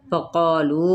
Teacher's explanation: قا پہ الف مدہ، لو کو ہم مد کی وجہ سے 4 حرکت کھینچیں گے